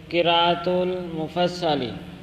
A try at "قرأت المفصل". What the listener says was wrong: نہیں، قراءت نہیں، قرأت المفصلہ، قرأت المفصلہ